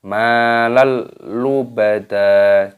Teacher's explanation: tanwin yang bertemu dengan huruf lam ini hukumnya dibaca idgham bilagunnah Jadi diilhamkan dimasukkan tanpa berdengung jadi dibaca malel ubadah jangan didengungkan malal tidak boleh lubadaa disini